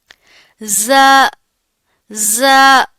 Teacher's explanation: جب زبان کی نوک نیچے والے سامنے کے دو دانتوں کے اندرونی کناروں سے لگے گی تو زا ادا ہوگا. اس کی ادائیگی میں سیٹی کی آواز آتی ہے، سختی ہے اور سیٹی ہے.